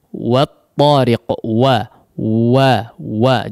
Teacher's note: Huruf waw memang dimonyongkan secara bacaan ya, tapi ketika to ya usahakan tidak perlu di depan ya, atau tidak perlu dimonyongkan kedua bibirnya.